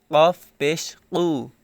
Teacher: কফ এর উচ্চারণের সময় একটু ধাক্কা খাচ্ছে বা ধাক্কা দিচ্ছি